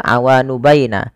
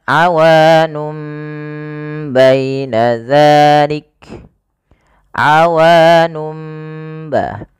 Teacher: Nah, sehingga awalnya kan nun diganti dengan mim karena dia bacaan iqlab yaitu nunnya bertemu dengan huruf ba